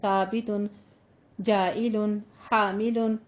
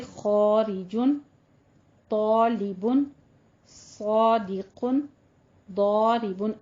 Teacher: اس الف سے پہلے اگر حروف مستعلیہ آ جائیں تو ان کو پھر اس کنڈیشن میں ہم اس الف کو بھی پر ہی پڑھیں گے، جیسے خارجن، طالبن، صادقن، ضاربن۔